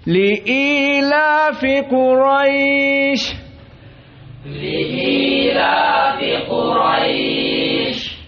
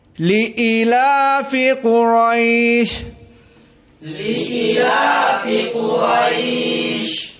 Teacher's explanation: qiraah Ibnu Amir dihilangkan ya-nya